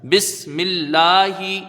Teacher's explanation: لفظ اللہ کے لام سے پہلے یہاں زیر ہے، لفظ اللہ کا لام باریک پڑھا جائے گا